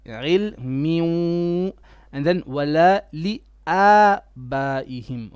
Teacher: Try to put a bit more ghunna on your ilmi, because we have a tanween on the meme, okay? So there's a ghunna which merges with the wow.